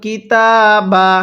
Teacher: যে হরফের উপরে এরকম খাড়া চিহ্ন থাকবে ওই হরফটি আমাদের এক আলিফ টেনে পড়তে হবে